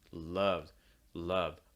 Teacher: notice that schwa sound love love a lot more relaxed here than in the british version so it's not la it's more la everything's relaxed tongue lips